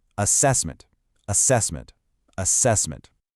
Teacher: The stress is on the second syllable cess. And the last part is weak again. Another schwah. So the rhythm is, you guessed it, du du duh.